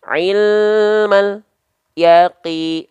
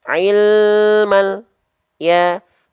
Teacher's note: antara lam sukun dengan ya tidak boleh ada jarak